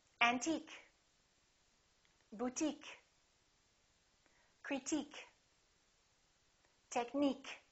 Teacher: the word ends with i-q-u-e we stress the suffix